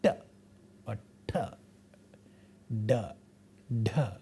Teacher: With the process that tip of the tongue goes all the way to the alveolar ridge and hits it backward, curls first and then hits that alveolar ridge, and therefore we get retroflex sounds. As you can see, the process itself is difficult, so it's not there, it's not available in many languages of the world.